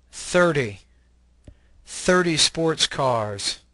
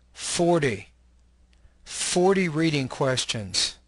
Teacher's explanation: stress the first part of the number